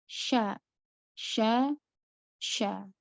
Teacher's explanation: pengucapan huruf syin dikatakan sempurna ketika suara kita yang tertahan alidah bagian tengah lidah yang tertahan ke langit-langit kemudian ada kita merasakan ada angin yang tersebar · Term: tafasy